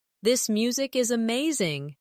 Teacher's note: Again, this music is amazing. Stress amazing to show enthusiasm.